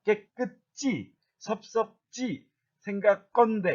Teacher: 그러니까 어근의 소리가 안 울림 받침으로 끝나는 경우, 즉 기억, 디귿, 비읍, 소리 받침으로 끝나는 경우에는 거센 소리로 표기하지 않습니다. 얘네들은 거센 소리가 아니라 깨끗지, 섭섭지, 생각건대 이렇게 된 소리로 발음해야 옳습니다